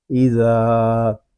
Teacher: والنہاری، حمزہ زیر ای، ذال الف زبر زا، اذا، ذال کو ہم ایک الف تک کھینچ کر پڑھیں گے کیونکہ یہاں الف مدہ ہو رہا ہے. اس کو ایزا اس طرح نہیں پڑھیں گے، اس کو پڑھیں گے ایزا.